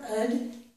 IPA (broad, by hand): əd